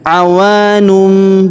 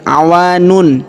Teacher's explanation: tanwin unnya berubah menjadi mim